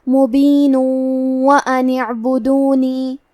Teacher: ہم تنوین کو واو میں ملا کے غنہ اور تشدید کے ساتھ یہ حکم کو ادا کریں گے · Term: ادغام بغنہ